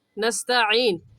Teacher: आइन हलक के दरमियान के हिस्से से निकाल कर पढ़ा जाता है